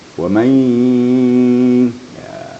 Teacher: Nun mati atau tanwin bertemu dengan huruf yang 4 yaitu ya, waw, mim, nun. Diidghamkan serta digunnahkan. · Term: Idgham ma'al gunnah